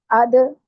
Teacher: दाल पे कलकला होगा, अद यानी पलट के आवाज आएगी